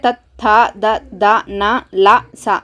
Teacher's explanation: ಇವನ್ನ ಹಲ್ಲುಗಳಿಂದ ಉದ್ಭವ ಆಗುತ್ತೆ ಅಲ್ವಾ ಅದಕ್ಕೆ ಇವನ್ನ ದಂತ್ಯ ವರ್ಣಗಳು ಅಂತ ಕರೀತೀವಿ · ಇವು ಹಲ್ಲುಗಳ ಸಹಾಯದಿಂದ ಇವನ್ನ ಉಚ್ಚಾರ ಮಾಡ್ತೀರಿ.